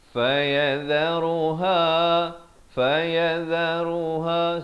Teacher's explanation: semua satu harakat kecuali ha, dua harakat.